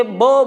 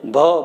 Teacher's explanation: બ બોલો તો ઓછો શ્વાસ બહાર આવશે, અને ભ બોલો તો વધુ શ્વાસ બહાર આવશે.